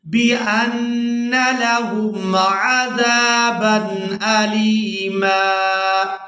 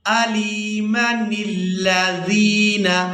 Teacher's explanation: اب یہاں پر دیکھیں کہ آیت مکمل ہو رہی ہے، ہم نے کر دیا یہاں پر وقف، تو میم کو ایک الف مقدار کھینچ کر ادا کیا وقف کی صورت میں